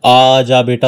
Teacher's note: जैसे कई बार हम जब छोटे बच्चों को मनाते हैं या बुलाते हैं तो उसको कैसे बोलते हैं, आ जा बेटा, तो ये जो आ हमने खींच दिया ये ध्वनि कैसे बन गई, प्लुत ध्वनि बन गई